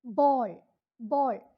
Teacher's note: back, half open, rounded cardinal vowel. For the sixth one, you have to contemplate on the word ball, ball, pandil.